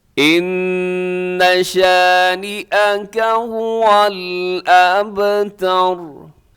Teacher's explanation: اب یہاں با کلکلا کیجیے گا کیونکہ با ساکن ہے، اور آخر میں را ہے، را وقف کی وجہ سے ساکن ہوگی تو وہ را بھی موٹی پڑھی جائے گی۔ اس آیت کو پھر سنیے گا، ان شانئک هو الابتر۔